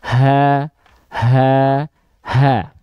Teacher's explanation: ha besar sering kita sebut keluar dari pangkal kerongkongan dekat dada